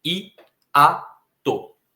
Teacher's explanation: A letra I fica em uma das sílabas, a letra A fica em outra das sílabas. E ambas são vogais. Não é que uma seja uma semivogal e a outra é uma vogal. Ambas são vogais, ambas são fortes. Aqui nós temos um hiato.